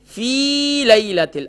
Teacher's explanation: فا کے بعد جو یا ہے یہ یا مدہ ہے، ایک الف کی مقدار کھینچیں گے، ہم اسے بھی کھینچتے نہیں ہیں.